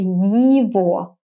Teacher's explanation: So to pronounce it well, imagine saying yippee. So yi sound, and then you say во. I know, you see the letter g, so naturally you want to say его, but it's wrong.